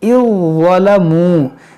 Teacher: یہ ذال جو ہے ضا میں داخل ہوگا, اذ ظلموا, اس ذال کی آواز نہیں آئے گی, یہاں پر ضا کی آواز آئے گی